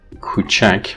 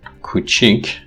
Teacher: the a changes to e, you know that it's an example of vowel raising